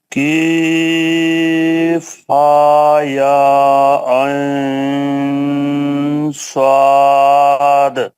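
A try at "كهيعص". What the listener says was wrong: ابھی تک کسی نے کیف پڑھا؟ کیف اردو میں ہوتا ہے, عربی میں چھوٹا کا بڑا کا, کاف اور اس میں بس کاف قاف. کیف کسی نے پڑھا ابھی تک؟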